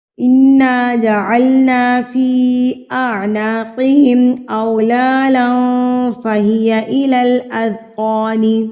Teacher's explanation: یہ مد منفصل یعنی کہ چھوٹی مد ہے، اور اس کو ہم نے اس الف سے یعنی کہ اس حمزہ سے پہچانا ہے، اور اس مد کو ہم نے 3 حرکات کے برابر کھینچنا ہے